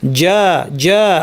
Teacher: জু আওয়াজটা হচ্ছে জু, চু না, জু, বাতাস বন্ধ থাকবে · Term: জিমের আওয়াজ